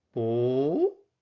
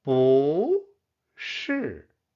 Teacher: bu fourth tone changes to the second tone